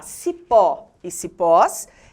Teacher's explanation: marcar o timbre fechado da vogal o já cipó e cipós recebem o acento agudo pois o timbre da vogal é aberto